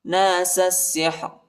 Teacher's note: سین کو سین کے ساتھ ملائیں گے